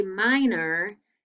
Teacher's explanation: when we say minor it sounds like er even though it's or